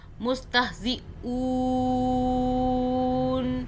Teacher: ہم نے نون کو سٹاپ کرنے کی وجہ سے ساکن کیا, ہم نے اس کو آدھا پڑھا, نون کو چھپا ہوا پڑھ لیا, ایسے کہہ لیں.